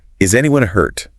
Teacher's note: With an upward inflection and a worried tone. Yeah, you can hear the concern in his voice.